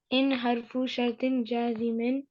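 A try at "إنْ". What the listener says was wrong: इन्ना नहीं है ये, इन है, ठीक है। हाँ, इन हरफु शर्तिन जाजिमिन, जाजिम का मतलब क्या होता है कि ये मजजूम करता है, इसके बाद जो फेल आता है ना उसको मजजूम करता है।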